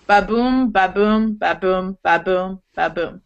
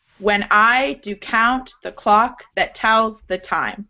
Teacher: the first syllable is unstressed and the second is stressed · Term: iambic pentameter